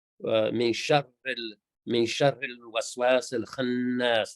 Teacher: The nun on the khannas gets held a little bit longer. So not khannas, it's khannas. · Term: shadda